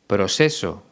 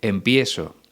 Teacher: el cantante pronuncia tanto la ce como la zeta como si fuera una s